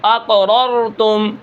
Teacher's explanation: لیکن اگر میں را کو موٹا کروں گا اقررتم، تو یہ زبان کیا ہے؟ پشت زبان کو بھی دخل ہو جاتی ہے، یعنی زبان کی پشت بھی اوپر لگ جاتی ہے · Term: را موٹی